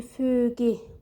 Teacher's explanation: üfüqi sözündə Ü uzanır. Bu sözümüz isə istisnadır.